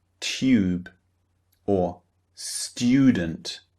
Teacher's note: in the middle for example tube tu b e tube so after the T sound the T sound we produce the Y sound